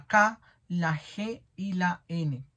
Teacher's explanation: con dorso en la lengua contra el paladar posterior que sería la k, la g y la n. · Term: guturales